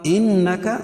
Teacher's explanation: انک نون مشدد ہے، غنہ ہوگا